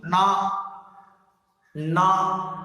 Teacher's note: त्याचा उच्चार, त्याची हवा आपल्या नाकातून येते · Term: न रे बाणाचा